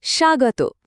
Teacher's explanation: সুয়ের উ আর আগতর আ, এখানে উ বদলে বফলা বা ওয়া সাউন্ড হয়ে তৈরি হলো স্বাগত